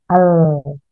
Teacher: Inhiraf pada lam, suara menyimpang ke dua ujung sisi lidah karena ujungnya menghalangi jalan keluarnya.